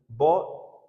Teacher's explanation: स्पर्श व्यंजन है। प फ ब भ ओष्ठ भी है। अल्पप्राण भी होगा। सघोष होगा। निरनुनासिक होगा। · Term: ब वर्ण